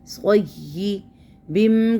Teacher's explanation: صی، صاد یا زبر صی یا زیر جی، صی بم کو دیکھیں تو تنوین کے بعد یرملون کا میم، اس لیے یہاں پہ ہوگا ادغام غنے کے ساتھ، کیونکہ میم مشدد غنہ بھی ہے نا۔